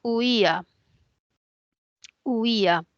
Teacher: i y la a Y ese yato es un yato acentual porque hay una cerrada una abierta y la cerrada tiene la mayor fuerza de voz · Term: hiato acentual